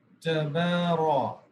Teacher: تبارك الذي تبارا، اس میں ہم خیال رکھیں گے کہ را کی آواز کو موٹا کرنا ہے. تبارا، تبارا نہیں پڑھنا.